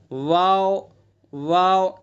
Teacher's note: واو کا مخرج دونوں ہونٹ جبکہ پورے نہ ملے